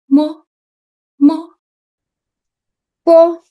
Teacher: It sounds like the letter M in the word man. You close your lips together, and your tongue is relaxed, resting on the bottom. So it goes like mo, mo.